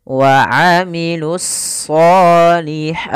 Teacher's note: Yaitu alif lam yang dia ditulis tapi tidak dibaca sehingga langsung kepada huruf shad. Kemudian pada lafal shad itu kita tebalkan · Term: ditebalkan huruf shadnya